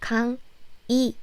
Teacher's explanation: It's weird, right? I said if this 의 sound is in the middle of the syllable, not in the first syllable, then you pronounce it like 이, as in 강의.